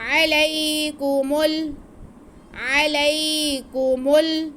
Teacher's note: अलई अलई, आगे काफ पे भी पेश है और मीम पे भी पेश है, तो उनको खींचना नहीं है, लेकिन मीम का पेश हमने आगे मिलाना है, क्योंकि लाम साकिन है।